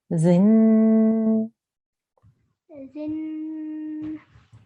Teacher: So when we have to join to a noon gunna, we have to hold and make a nasal sound from the nose pipe for about 2 seconds